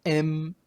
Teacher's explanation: sounds that are made with the air flows through the nose the air goes through the nose by lowering the soft palate at the back of their mouth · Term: nasal